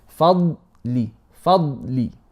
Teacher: First it's fa and then the tongue, the dad has something called itbaq and also adhesion, elevation as well. So it sticks to the palate. Fadli. Not fadli is wrong because you're bouncing the dad, and not fadli making hams.